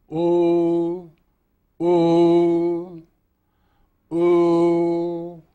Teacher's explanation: This has a cavernous deep resonating quality because by dropping the back of the tongue and relaxing it you form a large resonating chamber in the rear of the mouth